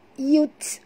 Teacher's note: bunyikan hamas pada huruf ta yang mati.